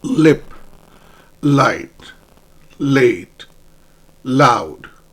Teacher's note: Your tip of your tongue touches the alvear ridge · Your tip of your tongue touches the alveolar ridge, and air this time flows around both sides, from the right and from the left. It lightly touches the ridge.